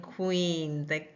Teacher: we can take two phonemes, the K and the W phoneme, bring them together to represent the Q in queen. And we will see one letter representing those two sounds, and that is the Q in queen.